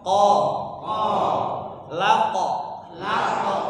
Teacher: huruf qaf itu punya sifat Qalqalah ketika sukun dipantulkan